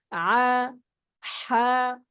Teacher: 2 নম্বর মাখরাজ হলকের মধ্যখান থেকে আইন আইন হা হা আ হা, মানে হলকের মধ্যখানে একটা প্রেসার পড়বে